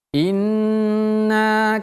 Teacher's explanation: ingat nun kalau tasydid ditahan agak lebih lama